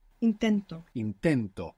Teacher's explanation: the accent in the present tense is going on the penultimate syllable, the second last syllable